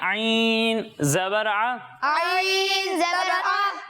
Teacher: हलक के दरमियाने हिस्से से।